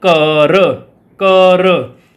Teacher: ਜਦੋਂ ਆਪਾਂ ਸੁਰ ਵੇਖਦੇ ਹਾਂ ਤਾਂ ਘੱਗਾ ਕੱਕੇ ਵਿੱਚ ਬਦਲ ਜਾਂਦਾ ਆ